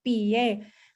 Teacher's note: primero tengo una vocal que es más cerradita que mi boca se cierra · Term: diptongos crecientes